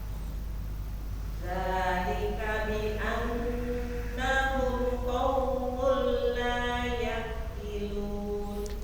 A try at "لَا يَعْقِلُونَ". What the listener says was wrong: Lebih diperjalankan ainnya. Ya'qilun. Lagi.